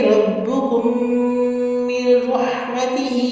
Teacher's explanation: میم کو را سے ملائیں گے اور ہا واضح کریں گے · ربکم میں را پہ زبر ہے تو را کو آپ موٹا کریں گے اور را تفخیم کے ساتھ پڑھیں گے۔ ربکم، کم میم کو میم کے میم سے ملائیں گے اور یہاں پہ ادغام شفوی ہو رہا ہے